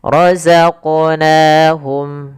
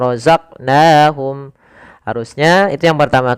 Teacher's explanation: Pada lafal qaf ini kita kita pantulkan huruf qafnya. Kesalahan yang terjadi adalah tidak memantulkannya.